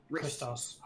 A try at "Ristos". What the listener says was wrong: K is silent like a knife.